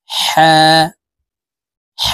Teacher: এই হার এর উচ্চারণ হলকের মধ্যখান থেকে পড়বো